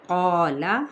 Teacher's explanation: قال الف مدہ کے ساتھ، قاف بھی پر آلریڈی ہوتا ہے تو الف اس کے ساتھ ہی کیا ہوگا، پر ہو جائے گا